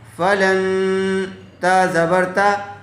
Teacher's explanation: فا زبر فا، لام نون زبر لن، فلن. نون ساکن کے بعد حروف اخفا میں سے تا آیا ہوا ہے، اس لیے غنّے کے ساتھ اخفا کر کے پڑھیں گے